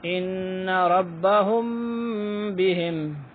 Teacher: ہونٹ بند ہوں گے اور آواز ناک میں جائے گی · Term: اخفا